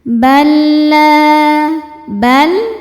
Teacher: Cara bacanya lam dimasukkan ke lam kedua ya. Lam yang sukun tidak ditahan karena dua-duanya enggak punya dengung. Masuk aja ya. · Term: idgham bila ghunah